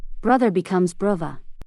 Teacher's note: the voiced th may be voiced as a v sound